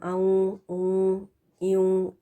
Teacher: پھر ہے نون ساکن یا تنوین کے بعد واو کا آ جانا، اور اس میں بھی انکمپلیٹ غنہ ہوگا، غنہ ناقص، اور اس میں ہم آؤں اوں ایوں اس طرح کی پروننسیشن کریں گے.